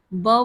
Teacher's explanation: ब हमारा यह ओष्ठ वर्ण है। यह अल्पप्राण ध्वनि है। यह घोष वर्ण है। साथ ही साथ यह स्पर्श वर्ण है।